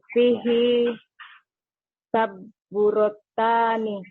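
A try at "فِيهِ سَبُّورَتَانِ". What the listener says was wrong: Jangan lupa dipanjangkan. Sabu itu saburotan. Ulang lagi coba.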